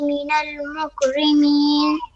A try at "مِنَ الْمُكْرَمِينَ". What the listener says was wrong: بیٹا راہ پہ زبر ہے میری گڑیا.